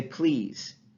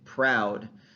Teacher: So one common example in English is found in the production of consonant clusters at the beginning of words, where normally voiced liquids take on the voiceless quality of the preceding voiceless consonant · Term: voiceless liquids